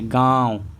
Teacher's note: इसका जब उच्चारण करेंगे दोस्तों तो नाक से कम उच्चारण होगा और मुंह से ज्यादा वायु निकल। जैसे गांव तो मुंह से ज्यादा वायु निकल रहा है, नाक से कम निकल रहा है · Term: अनुनासिका